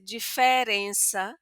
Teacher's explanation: hay lugares que van a abrir esta e